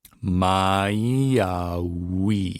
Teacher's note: a couple of words in the middle there, mai au, that don't have any okinas between them. So we're going to run the vowels together